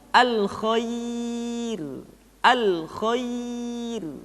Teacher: ro dibaca dengan tipis ketika didahului oleh huruf ya yang sukun